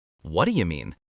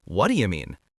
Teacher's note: Notice how the rhythm goes du du dah.